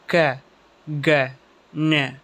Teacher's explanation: டங்குடைய back side கரெக்டாக soft பேலட்டை நோக்கி ரைஸ் ஆகி அந்த ஏரை பிளாக் பண்ணி அது மூலமாக இந்த சவுண்ட்ஸ் க்ரியேட் ஆகும். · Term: வீலார் சவுண்ட்ஸ்